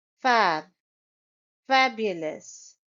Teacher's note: It's a three syllable word and the stress is on the first syllable